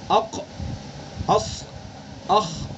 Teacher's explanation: ان کو جو ادا کریں گے تو زبان کا جو اکثر حصہ ہے وہ تالو کی طرف اٹھ جائے گا. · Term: استعلا